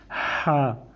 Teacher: اس کو ہمیں حلق کے درمیانے حصے سے بولنا ہے